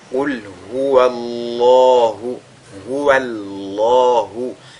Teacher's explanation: Et donc, on a affaire ici à un cas de at-tafkhim, dont le lam du mot Allah est donc lu avec agrandissement · Et il faudra que ce soit uniquement le mot Allah qui soit lu avec emphase, non pas la lettre waw qui le précède